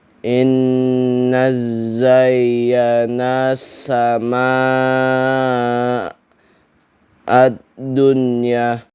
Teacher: Cara membaca izar mutlak adalah dengan membaca nun sukun atau tanwin dengan jelas tanpa dengung gunah ketika bertemu dengan huruf ya atau wau dalam satu kata